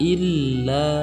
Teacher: huruf la dibaca panjang 2 harokat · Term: mad asli